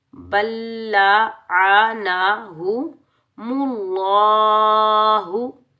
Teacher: बल्ला, इन के ऊपर ज़बर बगैर खींचे पढ़ेंगे, नून के ऊपर ज़बर बगैर खींचे पढ़ेंगे, हा के ऊपर पेश बगैर खींचे पढ़ेंगे और ये दो आंखों वाली हा को हम सीने की तरफ वाले हलक से अदा करेंगे और बगैर खींचे पढ़ेंगे।